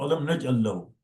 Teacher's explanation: So it is assimilated. The sakin of first lam has assimilated in the second lam, and the second lam has a shadda now. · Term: assimilation